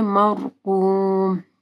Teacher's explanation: مرقوم، را ساکن سے پہلے میم کے اوپر زبر ہے تو را موٹی پڑی جائے گی، قاف کو موٹا پڑھنا ہے